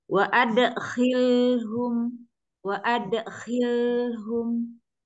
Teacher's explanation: lam sukunnya itu tawasud ya dialirkan sedikit disempurnakan lamnya jangan kecepatan